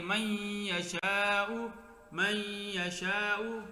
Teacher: تو من یشاء میں یہ ادغام ہے کہ نون کو یا کیا، یا کا یا میں ادغام کر دیا